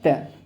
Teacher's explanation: देखिए दांत से ही आप ता बोल सकते हैं